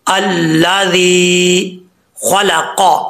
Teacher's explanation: خا اور قوف کو پر پڑھتے ہوئے لام کو پر نہیں پڑھنا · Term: حروف مصطلیہ